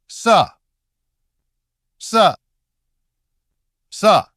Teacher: Still friction, but no vibration in the throat. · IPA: /s/